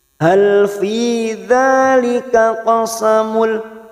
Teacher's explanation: dhamma tanwin bertemu lam namanya idgham bila gunnah, hanya masuk tanpa mendengung, tanpa ditekan lama-lama